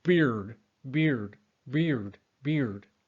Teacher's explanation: you are anticipating bringing back your tongue for that R. So you might do beard, beard, beard, beard, instead of maintaining that E sound further forward in your mouth and dragging it back, okay? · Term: Co-articulation